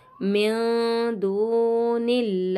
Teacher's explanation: नून साकिन के बाद दाल आ रहा है, इख्फा का गुन्ना करेंगे।